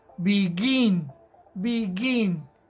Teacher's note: tiene el acento en la última sílaba begin begin es la partícula en la que más fuerza hacemos